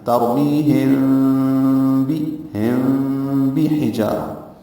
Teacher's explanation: بعض قراء دونوں کو ملا کے یوں پڑھتے ہیں، ترمیہم ہونٹوں کو بند کر لیتے ہیں. بعض قراء جو الازہری ہیں وہ میم ساکن کے بعد با آنے کی وجہ سے بیچ میں ہونٹوں کے بیچ میں گیپ لاتے ہیں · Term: اخفاء شفوی